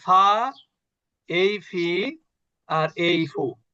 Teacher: এই যে নিচের ঠোট উপরের দাঁতের সঙ্গে স্পর্শ করে